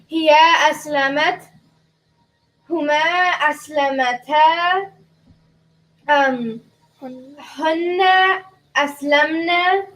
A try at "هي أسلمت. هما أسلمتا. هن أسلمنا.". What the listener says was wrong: Excellent. That was perfect.